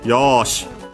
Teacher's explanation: Notice the longer vowel with the long vowel mark, the small su at the end, so yeah, an abrupt end, more strictly speaking, a glottal stop technically